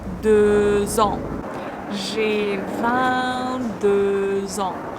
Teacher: X usually is not pronounced here, but the next word starts with a vowel, so this X letter is pronounced as Z